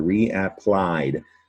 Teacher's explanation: reapplied, the last syllable applied is the stressed syllable in red